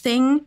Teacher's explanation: the interdental fricative which you may know as the the th sound right the first sound in thing and this is a sound that is relatively difficult to articulate